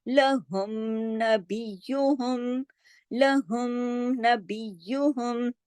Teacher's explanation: जाती सिफात कौन सी है, गुन्ना, जाती सिफत के साथ, यानी बगैर किसी तब्दीली के मुकम्मल तौर पर वाजे खुल्लम खुल्ला गुन्ने के साथ अदा करना होगा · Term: इजहार शफवी